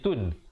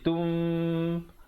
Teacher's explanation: Bunyi nun ditukarkan kepada bunyi mim yang nipis, kadar panjang 2 harakat. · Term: iqlab